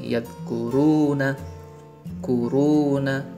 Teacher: karena ada waw sukun yang sebelumnya ada huruf yang berharokatkan fathah, maka 2 harokat saja sudah cukup saja. Maka ngayunin manjanginya ya pendek aja saja, nggak usah saja, itu lebay. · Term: mad asli